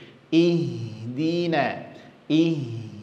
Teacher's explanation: ha memiliki sifat yang namanya HAM maka coba dingalirkan sedikit